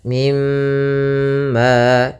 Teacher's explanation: tahan dulu suara mimnya dua harakat · Maka di sini cara membacanya yaitu tahan dulu suara mimnya 2 harakat, mimma. Kemudian pada lafal ma ada mad tabi'i lagi yaitu adanya fathah bertemu alif. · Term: ghunah, gunnah